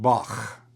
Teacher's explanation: this is going to be like a breathy K, like Bach, the CH at the end of Bach.